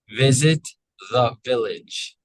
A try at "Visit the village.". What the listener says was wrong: Great.